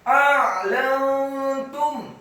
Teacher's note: ainnya dibaca sukun ditekankan keluar dari tenggorokan. A'lantum, kemudian lamnya dibaca fathah satu harokat, nun yang sukun.